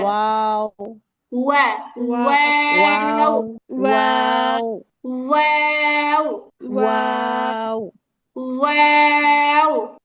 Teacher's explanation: ওয়াও উচ্চারিত হয় দুই ঠোঁট গোল করে সামান্য ফাঁকা রেখে।